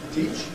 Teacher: ‘Pre-Fortis Clipping’, because the /ʧ/ is voiceless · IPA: [ˈtiʧ]